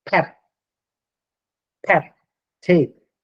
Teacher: So place of articulation is put by labia, both lips. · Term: bilabials